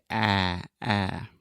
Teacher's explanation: this is a very open and front sound. So you want to open your mouth a lot, and then just imagine that you're kind of pushing everything in your mouth, your tongue, your teeth, your lips, everything to the front, and then say ah, ah.